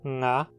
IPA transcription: ŋa